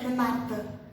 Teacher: Então, por exemplo, Renata, eles não pronunciam Renata, eles falam Renata, como se tivesse um acento no último A, tá? A gente fala como se tivesse um acento no penúltimo